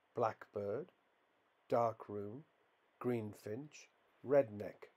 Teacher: as a compound compounds are generally stressed on the first element in the case of compounds made up of a noun plus noun the stress generally falls on the stressed syllable of the first word